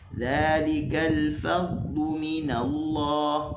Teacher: Fadlu yang kita dengar tu adalah rakhawah bagi huruf dad